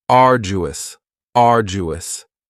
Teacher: Next is arduous, and arduous has 3 syllables, and the stress is on the first syllable, arduous. Now, you don't hear that D sound that much. It's not very strong. It almost sounds a little like a J.